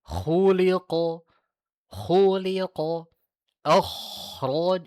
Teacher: Kan kha termasuk isti'la, tetapi dia tidak itbaq. Maka ketika disebutkan jangan terlalu tebal, karena nantinya akan jatuh menjadi itbaq.